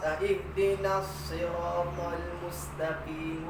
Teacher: ada pada huruf sa ni sifat safir nama dia, desiran. Ada pada dia isti'la.